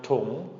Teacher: It's going to go down, tung, and then come back up quicker. You're not going to draw it out like the first part, ta. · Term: short rising tone